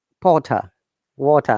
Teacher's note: there is no R sound